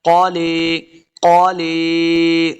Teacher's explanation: قاف حروف مستعلیہ سے اس کو موٹا کر کے پڑھنا ہے